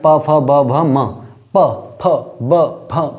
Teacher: जितनी बार हम ऐसे शब्दों को बोलेंगे तो हमारे ओठ मिलेंगे आपस में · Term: ओष्ठ